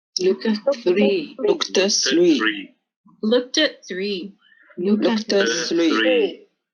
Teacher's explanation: And you can really hear how looked and at blend together.